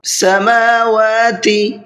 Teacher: میم کو بھی کھینچ کر کے پڑھنا ہے اور واو کو بھی کھینچ کر کے پڑھنا ہے، اس لیے کہ دونوں کو اوپر کھڑا زبر ہے اور کھڑا زبر کھینچ کر کے پڑھا جاتا ہے۔